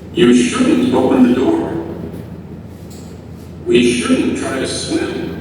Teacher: In the audio, they stress shouldn't and they pause before them.